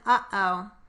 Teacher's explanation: the glottal stop, which is the middle sound in uh-oh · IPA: ʔ